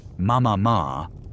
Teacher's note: The M, P, and B sounds are bilabial. They are made by simply putting the lips together. They are among the very first and easiest sounds a human infant can make.